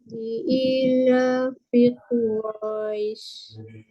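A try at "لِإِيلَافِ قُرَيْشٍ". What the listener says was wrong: Tarik panjang sikit. Quraisy. Ra itu panjang dulu. Quraisy. Matikan harakat terakhir huruf shin.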